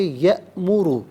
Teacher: حمزہ ساکن ہے تو جھٹکے کے ساتھ پڑھیں گے یأمر، اور یأمر میں را پر پیش ہے، را پر زبر یا پیش ہو تو پر پڑھتے ہیں، زیر ہو تو باریک پڑھتے ہیں، یہاں پر کر کے پڑھا جائے گا۔